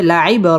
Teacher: বা কলকলার হরফ ধাক্কা দিয়ে পড়তে হবে